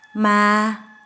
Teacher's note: falling low tone means bet or that